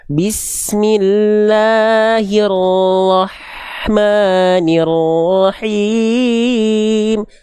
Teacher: H kecil punya sifat hams dan rohwa jadi dia ngalir nafasnya ngalir suaranya